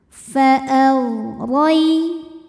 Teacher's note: Huruf ra dibunyikan secara tafkhim sebab ra berbaris di atas yaitu baris fathah, maka dibacanya tebal. Fa'al rai. Rai ada harfulin atau huruf lin sebab ada ya sukun yang sebelumnya berbaris fathah, maka dibacanya cukup kita lembutkan.